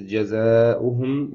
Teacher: Okay, here is جزاؤهم مد طبيعي ألف مد and there is فتحة before it, so the condition is there and the Hamza is coming in the same words, so this is مد متصل five counts